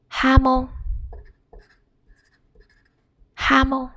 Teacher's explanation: J is pronounced as H. It's a stronger version of H.